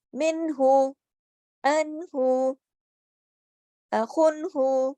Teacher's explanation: غنہ نہیں کرنا، آواز کو ناک میں لے کر نہیں جانا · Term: اظہار